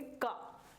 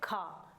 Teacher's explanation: महाप्राण जिनको बोलने में ऊष्मा यानी श्वास हो वो ज्यादा निकलती हो उसे हम कहते हैं महाप्राण।